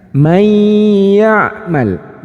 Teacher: Tapi ketika kita paham, maka cara bacanya ya-nya ini ditasydidkan, kemudian dimasukkan dan didengungkan. May ya'mal.